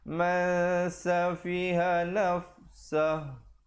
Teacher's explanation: Asalnya man, tapi bila bertemu sin, sembunyikan bunyi nunnya di belakang sin, kadar panjang 2 harakat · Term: ikhfa